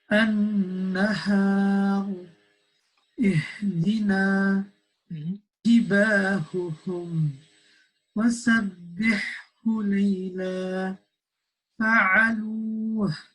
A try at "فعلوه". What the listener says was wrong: Don't stress the عين as well. Don't say فعلوه. No. فعلوه.